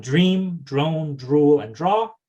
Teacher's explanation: the D becomes the voiced affricate j